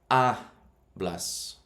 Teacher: the second last syllable takes the emphasis